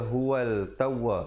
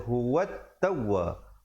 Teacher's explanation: Di situ alif lam syamsiah, lamnya tidak dibunyikan. Jangan baca huwal tawwa, dia kena baca huwat tawwa.